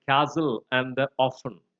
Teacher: T is another sound that is dropped from words like castle and often.